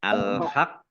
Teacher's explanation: qofnya dibaca dobel ada tasdidnya